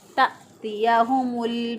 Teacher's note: हमज़ा को झटका दे के पढ़ते हैं, इसलिए हमने यहाँ पे इसको झटका दे के पढ़ा।